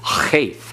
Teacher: Cheth, you have the throat constricting. You have that glottal stop. And you have that guttural sound that comes through.